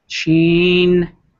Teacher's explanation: You go high, chin, and then the nasal has to be there because of the N, and then the emphasize is on both the I's.